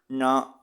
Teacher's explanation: நாவின் நுனி, மேல்வாய் அன்னத்தின் நடுப்பகுதியை தொட்டு அங்கிருந்து நகரம் பிறக்கிறதுங்கிறாங்க. நடுவுல, உங்க நாக்கோட நடுவுல வச்சு, நா அப்படின்னு சொல்லணும். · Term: மூணு சுழி நா, 3 சுழினா